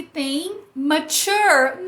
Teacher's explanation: Mature tem um schwa ali no começo, né?